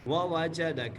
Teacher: دونوں واو کو بغیر کھینچے، جیم دال اور کاف کو بغیر کھینچے پڑھیں گے